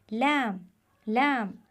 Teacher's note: लाम हर्फ लाम ज़बान का किनारा ज़्यादातर ऊपर की तरफ हरकत करता है और ज़बान के सामने वाला हिस्सा दांतों की जड़ों को छूता है। ये देखिए ये ज़बान है और ज़बान का किनारा जब सामने वाले दांतों की जड़ों पर लगे तो ये हर्फ अदा होता है लाम।